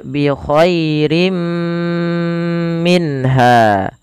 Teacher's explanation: tapi dia perlu ditahan karena dia ada bacaan gunnahnya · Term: idgham bi gunnah